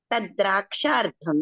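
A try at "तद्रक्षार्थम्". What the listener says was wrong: దీర్ఘం లేదమ్మా దీర్ఘం లేదు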